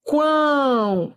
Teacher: Semivogal, vogal, semivogal. Olha o O com som de U. Tritongo.